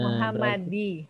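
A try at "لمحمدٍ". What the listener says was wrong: Muhammadin. Ya, di sini jangan tanggung, dia bertanwin.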